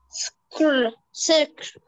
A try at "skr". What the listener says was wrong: No, not sec. See? not sec. The, you should not put anything between these letters. You should read them all at once. Skr, skr, blend them.